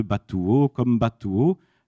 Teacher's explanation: avec des géminées expressives après voyelle longue